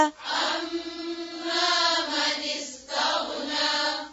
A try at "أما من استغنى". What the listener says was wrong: تغني تغ غين پر قلقلة نہیں ہوگا تا کو موٹا نہیں کرنا،